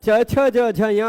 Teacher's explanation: च, छ, ज, झ, य में दांत के जस्ट ऊपर टच करके तब हम वर्णों का उच्चारण करते हैं। इसलिए च य दांत के जस्ट ऊपर उस स्थान को तालु कहा जाता है।